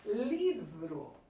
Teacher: eu percebo que a sílaba mais forte é a sílaba li. Então, ela é a sílaba tônica.